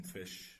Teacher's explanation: we have the lower lip and upper teeth touching each other. And a good example would be F in fish. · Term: labiodental